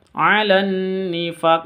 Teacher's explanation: nun tasydidnya dibaca dengung karena bacaan gunnah musyaddadah. Alan nifaq, awalnya ini faq, panjangnya hanya 2 karena berhenti di sini berarti panjangnya boleh 2, boleh 4, boleh 5 sampai 6.